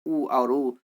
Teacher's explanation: तो ओठ लगभग आपके क्या गोल होके हल्का सा सट जाता है, इसलिए ओष्ठ से है।